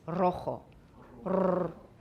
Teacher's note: Rrr. If it's the first R in the word, it is also a trill.